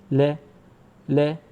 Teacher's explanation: इसमें छोटे ए की, यानी आ की, छोटा आ होता है जिसे बोलते हैं ए, तो उसकी ध्वनि इसमें सम्मिलित होती है, इसलिए इसको ले बोलेंगे। जिस व्यंजन का उच्चारण करते समय वायु जीभ के दोनों बगल से निकलती है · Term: पार्श्विक व्यंजन